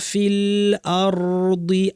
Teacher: আর বলার সময় আ শক্ত, র ভারী, আর অর যেন না হয়